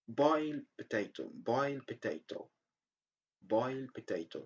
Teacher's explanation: Usually we don't pronounce the sound d when we have another word starting with the sound p. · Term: elision